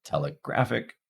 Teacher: in the case of telegraphic, we can hear primary stress on graph